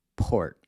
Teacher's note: So, same thing we did with the /k/ sounds—if you put your hand up against your mouth and say “port”, you’ll feel that puff of air when you pronounce the “p”